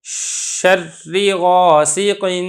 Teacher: جب میں شین ادا کر رہا ہوں تو آواز یہ منہ کے اندر پھیل رہی ہے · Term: صفت تشفی